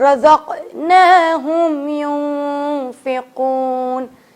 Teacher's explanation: اب یہاں پہ یون نہیں پڑھنا, یہاں پہ پڑھنا ہے یون, نون کو چھپا کر